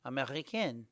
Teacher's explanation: The masculine version ends in a nasal vowel Americ. The combination N makes nasal sound in the nose.